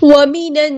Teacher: لام یہاں پر لام شمسیہ ہے، اس کو ہم ظاہر نہیں کریں گے، نون پہ غنہ زمانی ہو رہا ہے، ایک الف کے برابر یعنی 2 کاؤنٹس